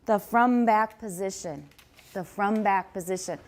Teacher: there is a stop at the end of front